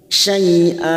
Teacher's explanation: Karena kita baca waqaf maka kita panjangkan 2 harokat, namanya bacaan mat iwat.